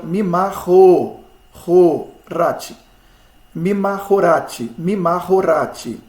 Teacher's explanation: Rati é a sílaba tônica.